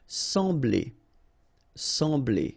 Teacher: you don't pronounce the M, you just get the sound en.